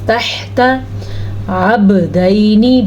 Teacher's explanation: با پہ بھی کلکلا ہو رہا ہے کیونکہ با کے اوپر ساکن ہے